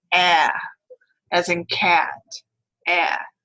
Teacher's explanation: it is a low front unrounded vowel and it is considered a pretty LAX vowel although it doesn't have a nice vowel to pair it with